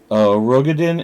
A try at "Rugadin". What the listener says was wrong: Rugadin. Rugadin. I know it's weird. It's spelled Ro, but it's pronounced Ru. Yeah, sometimes I'll pronounce it as Rogadin as well. Just guess that just makes more sense.